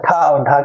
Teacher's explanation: अड़ ये है अल्पप्राण और ठ और ढ क्या है महाप्राण ठ और ढ को बोलने के लिए हमें ज्यादा अपने मुख से वायु निकालनी पड़ती है